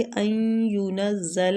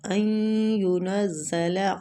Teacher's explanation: ان ینزل ادھر ادغام مع الغنہ ہو رہا ہے ، نون ساکنہ کے بعد یرملون میں سے کوئی حروف آ